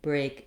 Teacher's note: A is a diphthong but it's still considered one vowel sound.